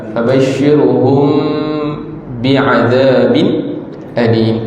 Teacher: Fabashshirhum bi mim mati bertemu ba hukum itu itu hukum ikhfa. Mim mati bertemu ba, yang penting dengung ikhfa syafawi.